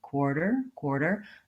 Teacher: even though this is an unstressed and short syllable quarter quarter I still need to have that tight back American our sound so really I'm doing two ears or and in this word